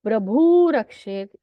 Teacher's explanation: प्रभु ह्रस्व उकारांत शब्द है, वो विसर्ग का सकार, सकार का रेफ, रेफ के आगे रेफ, तो पहले रेफ का मतलब प्रभुर वाले रेफ का लोप हुआ, और प्रभु का जो ह्रस्व उकार है उसका दीर्घ उकार होके प्रभु रक्षेत, ऐसा संधि यहाँ हुआ है